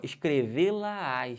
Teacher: perceberam que tem uma subida de Tom